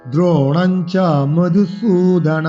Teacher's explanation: মধু সুতে দীর্ঘস্বরে টান দিতে হবে